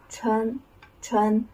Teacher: The first tone high level tone when you pronounce this tone uh you should uh keep your pitch uh steady and a level. That is no no rising or falling.